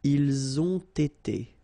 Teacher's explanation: You get first the liaison z, and then you get the t.